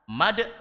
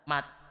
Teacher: Iya. Jadi karena kita tidak punya filosofi qalqalah, maka tidak bisa membedakan antara dal dengan huruf ta.